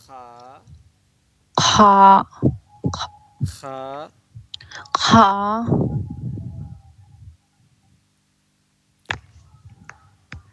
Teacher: पूरा मुंह को खोलें आप खा खा खा खा खारते हुए खा खा खा ख नहीं खा खा थोड़ी सी थोड़ी सी खड़खराहट की आवाज आएगी